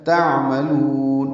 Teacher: تعملون عین ساکن پہ اظہار اور لام کو لمبا کریں گے